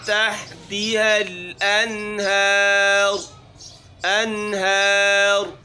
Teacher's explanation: تجری من تحتها الانہار، انہار، را موٹی کرنی ہے۔